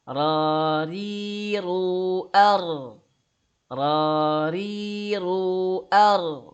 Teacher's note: Ra itu bisa tebal, bisa tipis. Kapan tebal? Ketika fathah dan dhammah. Kapan tipis? Yaitu ketika dia kasrah.